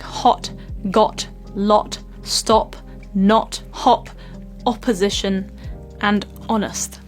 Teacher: the lip shape is very round and quite small and so it's not very long wide like some of the previous vowels we talked about it's very short and very round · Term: Short Round o sound